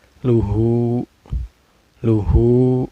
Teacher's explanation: Maka ini dihukumi mad silah qosiro. Cara bacanya dipanjangkan 2 harakat ya.